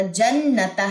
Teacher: اکثر لوگ کیا کرتے ہیں جناتا پڑھ دیتے، نون کی زبر کو لمبا کر دیتے، تو ایسا بھی نہیں کرنا.